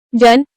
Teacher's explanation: जिभेचा स्पर्श दंत आणि तालू या दोन्ही उच्चार स्थानांना होतो म्हणून तो दंततालव्य वर्ण आहे